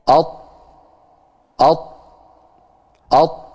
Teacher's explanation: ujung lidah bertemu dengan usulul tsanaya al-ulya. Bertemu dengan perbatasan antara gigi seri dan gusi yang atas. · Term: huruf to